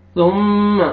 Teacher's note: ثم میم مشدد غنہ کریں گے، نوز میں ساؤنڈ لے کے جائیں گے۔